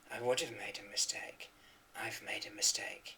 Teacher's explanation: So have can be have, or have, or of, or v, according to how much prominence we want to give it in the speech. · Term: different pronunciations